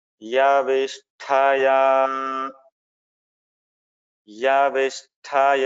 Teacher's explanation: यहाँ श आधा स मूर्धन्य श ठ महाप्राण है